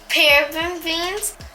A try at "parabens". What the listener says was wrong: It's not beans, it's parabens. No beans. Bins. Parabens.